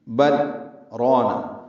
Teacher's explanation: لام ساکن پہ اظہار ہوگا اور آواز روک لیں گے، سکتہ واجب ہے